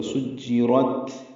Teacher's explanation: سین کو جیم سے ملانا ہے، را پر پڑھیں گے اور تا ساکن پہ ہمس ہوگا